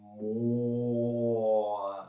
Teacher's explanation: Ça veut dire, par exemple, quand je dis mo, vers la fin, j'ouvre un peu la bouche. Ça veut dire que la voyelle n'est pas entièrement constante.